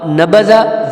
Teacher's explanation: اب نبذا زال چھوٹا ہے، ٹھیک ہے، زبان کی نوک سے یہ زال ادا ہوگا